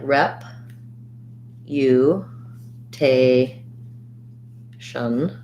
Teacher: this letter u has a glide and the u sound